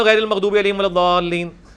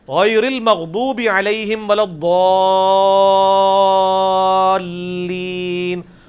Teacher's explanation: تو ولضالین میں جو الف کے اوپر بڑی والی مد ہے وہ 5 الف تک کھینچی جاتی ہے, یعنی 10 حرکات کی لینتھ کے برابر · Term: مد واجب